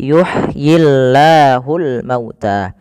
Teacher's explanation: lafal Allah bila didahului dengan huruf kasrah maka tidak boleh ditebalkan. Nah di sini kita namakan dengan lamut tarqi lam yang tipis.